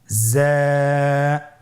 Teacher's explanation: এক আলিফ টেনে পড়তে হবে। হরফটি বারিক হরফ। এজন্য পাতলা করে উচ্চারণ করতে হবে। হরফটির মাখরাজ আপনারা দেখতে পাচ্ছেন জিহ্বার আগা সামনের নিচের দুই দাঁতের পেট ও আগার সঙ্গে লাগিয়ে উচ্চারিত হয়।